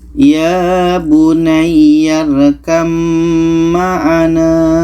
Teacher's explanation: Maka di sini ada ba bertemu mim. Maka bunyi ba ini terus kita masukkan ke mim. Bunyi ba ini tidak kita baca lagi.